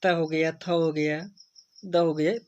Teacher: जिनका उच्चारण ऊपर के दांतों पर जीभ लगाने से होता है उसे हम क्या कहते हैं? दंत कहते हैं।